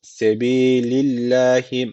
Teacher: Allah lafzı burada ince okunacak Neden Çünkü öncesindeki harfin harekesi altta yani Allah lafzına alttan bağlanılıyor